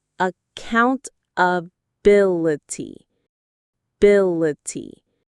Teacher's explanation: 6 syllables. The main stress is on bill.